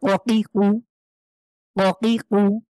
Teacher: ধাক্কা দিয়ে জিভের গোড়া তার উপরের তালুর সাথে লাগিয়ে কফ, তাহলে ককি কু, ককি কু, ধাক্কা দিয়ে আমরা পড়বো।